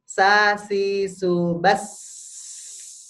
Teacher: si su bas kita tekan lama-lama Kepa kita enggak akan berguncang karena yang kita keluarkan adalah angin bukan getaran